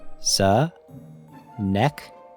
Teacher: It is a great example of a word that looks difficult to pronounce, but is actually fairly straightforward once you know how to say it. The emphasis is on the first syllable, and the CH sound is pronounced like a K.